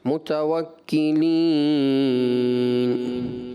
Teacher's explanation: وقف میں ناک میں آپ لے گئے آواز